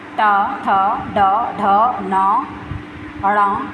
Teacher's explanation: उच्चारण मुर्धा मुख की छत से होता है